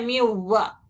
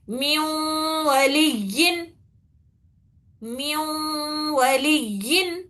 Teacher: میوا، اس میں نون کی آواز نہیں آ رہی، بٹ یہاں پر نون ہے نا، تو نون کو ملانا رہتا اس کو، اور غنہ بھی کرنا ہے دو حرکت، نون کی آواز تھوڑی باقی رکھنا ہے اس میں